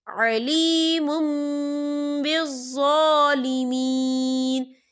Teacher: یا دیکھیں علیم، میم کے پر تنوین ہے اور تنوین کے بعد با آ رہا ہے، تو یہاں پر اقلاب ہوگا یعنی تبدیلی ہوگی. ہم پچھلے میم کو اگلے میم کے ساتھ ملا کر پڑھیں گے اور یہاں پر غنہ بھی ہوگا.